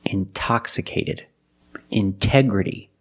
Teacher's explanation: The stress is after the NT in these words. So we pronounce the T as a pure T.